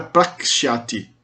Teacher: quando um sh, o som de sh, encontra com outro som palatal, sibilante, né, de S, ele muitas vezes vira um K